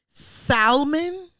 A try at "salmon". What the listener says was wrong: You pronounce the L in salmon around me one more time, and I'm gonna fuck you up. You've never heard anybody say salmon,